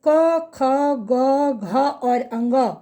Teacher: अब आप देखेंगे क का जब हम उच्चारण करते हैं तो क, ख, ग, घ और अंग इन 5 ध्वनियों का उच्चारण करते समय ध्वनि हमारे कंठ से निकलती है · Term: कंठ वर्ण